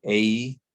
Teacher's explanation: this vowel has two different articulations the mouth closes a little bit while we say it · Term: diphthong